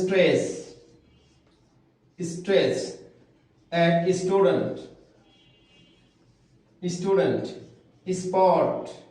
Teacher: এস এর পরে ফ ছ খ সাউন্ডস উচ্চারিত হবে না।